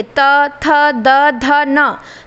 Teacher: त वर्ग का उच्चारण दंत से होता है। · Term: दंत व्यंजन